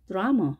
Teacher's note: 앞에는 A의 강세가 있기 때문에 뒤에 있는 A는 약화 현상이 일어나서 발음을 합니다.